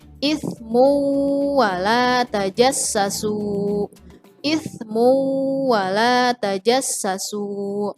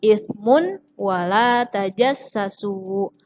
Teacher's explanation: perhatikan yang digarisbawahi ini dhommah tanwin di depannya ada huruf wow Jadi bacanya langsung masuk ke huruf wau nya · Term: Idgham Bighunnah